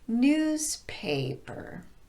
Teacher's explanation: I'm stressing the first syllable in paper by elongating it, not by raising my pitch